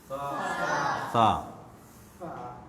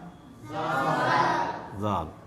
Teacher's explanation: तो वो फ़र्क हमको करना पड़ेगा। जुबान जुबान की नोक को अगले और ऊपर के दोनों दांतों के किनारे से मिलकर ये हुरूफ सा, जाल, और ज़ा अदा होते हैं